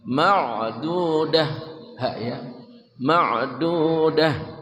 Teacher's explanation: ain dari tengah kerongkongan